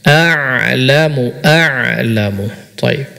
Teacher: Ain diucapkan dengan baik seperti Ma antatibika bukan Hamzah atau setengah Hamzah setengah Ain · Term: huruf ain